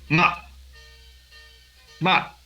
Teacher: el cuarto tono es totalmente descendente